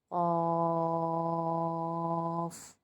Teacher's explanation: قوف کو جب ہم نے کھول لیا، ہم اس کی پرونانسیشن کے حساب سے ہم نے اس کو کھولا، قوف الف زبر قو اور فا ساکن خوف، تو قوف الف پہ یہ الف مدہ بنا، الف مدہ کے بعد مخفف حرف آ رہا ہے، یعنی ساکن حرف آ رہا ہے تو مد لازم مخفف حرفی بنا، جس کو ہم 6 الف کی مقدار کھینچ کر پڑھیں گے